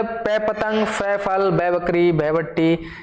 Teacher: ये सब क्या हो जाएंगे, ओष्ठ्य ध्वनि हो जाएंगी